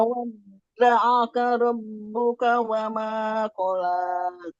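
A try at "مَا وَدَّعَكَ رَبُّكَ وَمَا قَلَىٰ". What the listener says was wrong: masih panjang, terlalu panjang. Kurangi lagi. Ma wadda'aka rabbuka wa ma qala.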